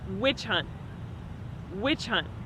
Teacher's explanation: when you say the word hunt, it has a stop T on the end. So it's not hunt, it's hunt. · So it's not hunt, it's hunt. You don't really hear the true T sound at the end of hunt.